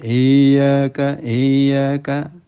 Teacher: seperti ada sakta I Yaka I Yaka tidak betul Ya karena ya itu memiliki sifat rikhwah rikhwah itu suara mengalir ya tapi jangan tidak mentasdid umpamanya iyaka iyaka ya ditekan tapi